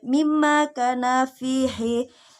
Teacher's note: huruf mim ditasydid dengan cara didengungkan 2-3 harokat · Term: hunnah